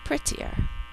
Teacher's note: We take the Y and change it to an I because it's not the end of the word yet, and the third syllable is er, as in her. again, we hear two T's for spelling, but in normal speech we would only hear one T sound